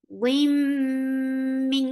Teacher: So you're keeping the sound in your nose for a longer time because this gunna is akmal.